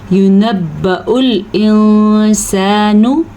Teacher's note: नून को लंबा नहीं करना, इख्फा ज़रूर करना है आपने